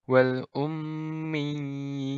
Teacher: bacanya sekali lagi dipanjangkan dua harokat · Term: Medan Gin